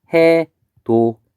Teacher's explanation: 디귿이 이하고 만나서 지읒으로 바뀐 것